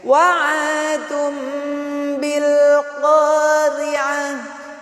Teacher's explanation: tanwin bertemu dengan huruf ba, adalah iklab. Cara membacanya melebur seperti huruf mim. Wa'adum berganti menjadi huruf mim, ya.